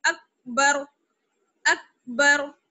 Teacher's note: اب را وہ ساکن کر دیا تو را کو موٹا پڑھیں گے نا، کیونکہ ساکن سے پہلے، را ساکن سے پہلے جب زبر ہو تو را بھی موٹا پڑا جاتا ہے